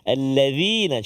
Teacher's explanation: Kemudian alladzina. Alladzina huruf dzal seperti biasa. Hujung lidah kita keluar sedikit.